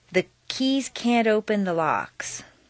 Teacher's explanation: if you have trouble with can't before a word that starts with a vowel such as open put in a very small D